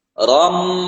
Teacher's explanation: Ram suaranya seperti keluar dari hidung, padahal mulut kita tertutup ya. Ram ditahan dulu. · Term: idgham bi gunnah